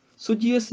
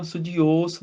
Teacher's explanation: ਊੜੇ ਨੂੰ ਹੋੜੇ ਦਾ ਉਚਾਰਨ ਹੋਏਗਾ, ਓਸ, ਥੋੜੀ ਜਿਹੀ ਆਵਾਜ਼ ਲਮਕਾ ਕੇ, ਔਂਕੜ ਨਾਲ ਡਬਲ ਆਵਾਜ਼ ਹੋੜੇ ਦੀ ਹੁੰਦੀ ਹੈ। ਸੁਝਿਓਸ, ਇੱਥੇ ਰੁਕਣਾ ਹੈਗਾ।